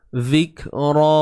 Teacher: Kena keluarkan sedikit hujung lidah kita. Sikit je tuan-puan ya. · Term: Huruf zal